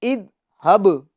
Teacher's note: ذال کو باریک کریں گے اور ذال میں قلقلہ نہیں ہونے پائے، اس کو دھیان رکھنا ہے، اور با میں ہم قلقلہ کریں گے۔